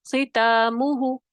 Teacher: حروف مستعلیہ جب کسرہ کے ساتھ ہیں، تو آپ نے یاد رکھنا ہے اس میں سب سے کم درجے کی تفخیم ہوگی